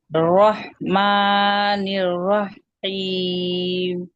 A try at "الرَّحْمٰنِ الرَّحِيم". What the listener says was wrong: देखिए निर्रहीम ऐम ऐम यानी आइन की तरफ है ना, ये आवाज नहीं देना है ना। अर्रहमानिर्रहीम दोनों हा है वस्ते हलक से। जी अदना हलक नहीं जाएंगे ना, हम अदना हलक जाएंगे तो आइन निकल जाएगा ना। जी आइन की आवाज नहीं देना, अदना हलक नहीं, आप ये वस्ते से अदा करिए लेकिन आइन की आवाज दे रही हैं, उसकी सिफत जो है ना आइन की सिफत दे रही हैं।